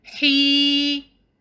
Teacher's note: we see a ya sukoon, which is preceded by a matching haraka. So we'll prolong ha for 2 counts